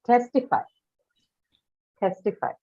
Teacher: It does have an aspirated stop, and that is ta here.